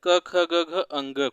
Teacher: क वर्ग का उच्चारण स्थान है कंठ